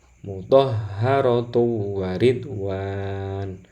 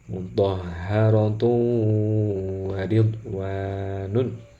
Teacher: Jadi tanwin masuk ke dalam wawu sekaligus harus gunnah. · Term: idgham bi gunnah